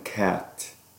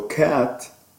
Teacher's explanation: And then we come to the a as in cat. So cat, the a is low, front, unrounded, lax vowel